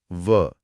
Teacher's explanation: आपके निचले होठ और ऊपर के दांत आपस में मिलेंगे। इसीलिए यह दंतोष्ठ है। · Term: दंतोष्ठ्य